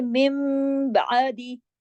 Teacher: नून की आवाज नहीं आई, मीम की आवाज आई